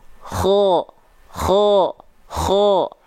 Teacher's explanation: huruf kho itu dilafalkan dari tenggorokan paling atas